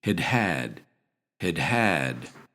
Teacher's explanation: in normal speech, we reduce the first had and we give the second had its full pronunciation.